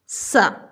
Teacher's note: स का उच्चारण स्थान क्या है? दंत है।